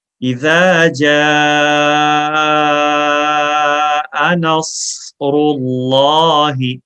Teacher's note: آپ زبان کو اوپر تالوں کی طرف اٹھائیں وسل ادا کرنے کے ساتھ ساتھ، تو صاد میں صفت استعلا پیدا ہو جائے گی، یعنی یہ موٹا ہو جائے گا.